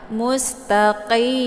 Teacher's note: Mus, ini sin dibaca tipis, kemudian ta ya. Mustaqim. Ini qi dibaca tebal ya, bukan ka ya, bukan ki.